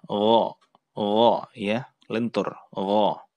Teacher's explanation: Kemudian ada huruf gha. Gha itu salah satu huruf yang keluar dari tenggorokan sama dengan huruf kha tadi. Tapi gha ini sifatnya tidak hamas, tidak ada udara yang terdengar.